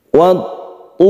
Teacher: Tasydid ta ini kita sebut dengan idgham syamsiyah. Ada al bertemu dengan ta, caranya kita tekan ke huruf ta.